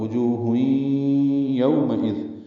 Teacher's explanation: واو ہونٹوں کی نا تمام گلائی سے ادا ہوتی ہے ، اس میں 2 واو ہیں، پہلی واو کو جلدی اور